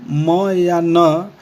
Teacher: जब हम म या न बोलते हैं तो मांसल तालु फेरिंक्स की दीवार से हट जाता है एवं हवा नाक के द्वारा बाहर आती है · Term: नेज़ल साउंड